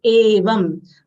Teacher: Uvacha evam, A long sound, Va full letter followed by Anuswar. Anuswar sound is half Ma, will not say Yevam, it is Evam. How we say A for apple, this is the same way we'll say Evam and not Yevam.